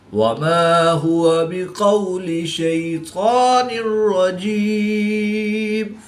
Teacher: دو زیر کی تنوین کے بعد را حروف یرملون میں سے ہے تو یہاں پر ادغام بلا غنہ ہوگا، یعنی بغیر غنہ کے ادغام کر کے پڑھیں گے · یا ساکن سے پہلے زبر ہے شین پر تو یا لین اس کو بھی لمبا نہیں کریں گے